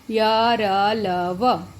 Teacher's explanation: फिर थे हमारे अंतस्थ व्यंजन, यानी जो स्वर और व्यंजन के बीच के होते हैं, जो स्वर का भी आभास करवाते हैं, व्यंजन का भी आभास कराते हैं, यानी य, र, ल, व। इनको बोलते समय जीवा जो है मुख के किसी भी भाग को स्पर्श नहीं करती।